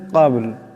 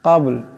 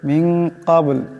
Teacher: কাবল এখানে বা সাকিন, বা কলকলা হরফ, আওয়াজটা একটু জটটা খাবে।